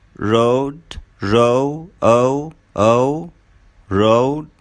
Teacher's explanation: The tongue is a bit tense and it moves from a mid position to a high position. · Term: O as in poet